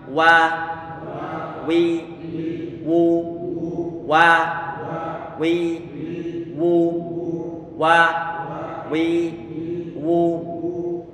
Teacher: Wa kita baca datar, mulut kita. Kemudian wi kita tarik ke bawah, wu kita monyongkan.